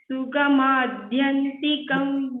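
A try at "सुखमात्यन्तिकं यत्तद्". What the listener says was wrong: sugamatyantikam this ta is the first ta uttam so that you distinguish between this ta and da you must clearly check okay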